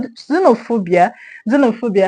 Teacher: We have xenophobia with a stress on P O.